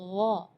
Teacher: Di ayat ini yang pertama di makhraj huruf ghain ya, ghairil maghdubi ya, perlu diperhatikan bukan G, bukan huruf G ya, bukan ga, tapi gha. Jadi kalau ga itu dia makhrajnya dari lidah. Ya, tapi kalau huruf ghain itu dari bagian tenggorokan ya.